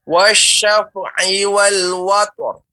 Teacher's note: Perhatikan fa tidak memantul, mengalir. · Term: fa mengalir